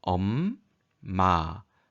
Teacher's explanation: 두 입술이 닿았다 가떨어지며 소리가 나게 되죠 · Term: 입술 소리